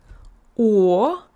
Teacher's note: Notice the Russian O opens up.